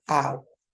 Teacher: We have the A, and then we go up here to the lax U, ow. And then we have oi, which is also something that, well, we have to move from the oi, see, here to the E. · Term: diphthong